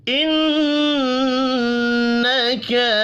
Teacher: نون مشدد پر غنہ کریں گے، حرکات کھینچ کر نہیں پڑھیں گے۔